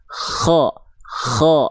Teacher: Kalau huruf kho dia mengalir nafas bersamaan dengan mengalir suara.